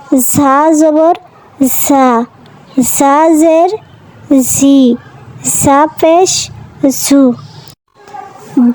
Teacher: ঝা জিহ্বার আগা সামনের নিচের দুই দাঁতের আগা থেকে